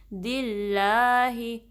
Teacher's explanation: اب اس میں جلالہ سے پہلے، اللہ کے نام سے پہلے کسرہ آئی ہے نا، تو لام کو باریک رکھنا ہے، دل نہیں بلکہ زبان فلیٹ رہے گی، نیچے رہے گی